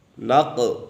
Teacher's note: قاف کے اوپر قلقلہ ہے اور یہ قاف حرف مستعلیہ میں سے بھی ہے تو اسے پر پڑھیں گے